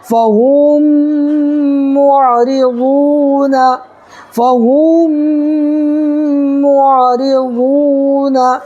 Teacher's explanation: اوپر پیش ہے تو واو مدہ ہوگا، اس کو بھی ایک الف برابر کھینچ کر کے پڑھیں گے